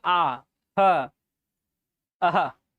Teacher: कंठ से आ रहा है आवाज, जीभ कहीं मुड़ ही नहीं रहा है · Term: कंठव्य